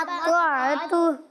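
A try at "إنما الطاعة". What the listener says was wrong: ہاں طاعۃ. ہاں ابھی طاعۃ ناک میں جا رہی ہے وہ نہیں کرنا. ٹھیک ہے اس کو صحیح سے پڑھنا ہے. انما الطاعۃ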